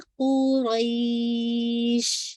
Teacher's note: और शीन पे तफशी वाज़े हो